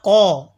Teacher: قوف زبان کی جڑ اور تالو کے نرم حصے سے ادا ہوتا ہے